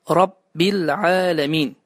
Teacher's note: Halbuki orada damma yox, kəsrədir. Rabbil aləmin deyə deyilməlidir.